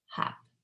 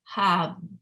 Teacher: for the /P/ I didn't feel the vibration because it's unvoiced but the /B/ I felt my vocal folds vibrating right here in my throat